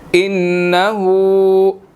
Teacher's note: نون مشدد ہے, یہاں پر غنہ ہوگا